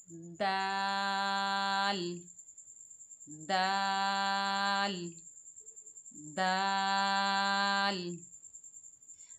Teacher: दाल। दाल की अदायगी में ज़बान की नोक को ऊपर वाले दांत यानी सनाया उलिया की जड़ से लगाएं। जहां से ता हमने अदा किया है वहीं से हम दाल की भी अदायगी करेंगे।